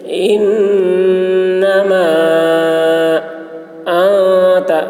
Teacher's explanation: نون مشدد غنہ ہوگا، میم میں مد کھینچیں گے